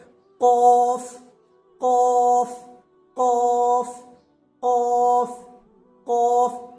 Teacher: जुबान की जड़ और उसके मुकाबले ऊपर का तालु थोड़ी सख्ती के साथ अदा करेंगे